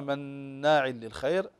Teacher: النون مشددة تغن بمقدار حركتين